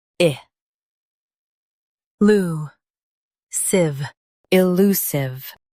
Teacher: Emphasize lu and soften sive at the end.